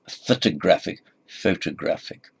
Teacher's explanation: photographic stress on the third secondary stress of the half stress on the first syllable now